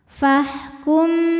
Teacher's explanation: Karena mim sukun menghadapi huruf ba, maka mim sukun dibunyikan dengan dengungan. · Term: ikhfa syafawi